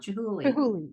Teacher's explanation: I thought you were saying with a T, but it's a hard CH sound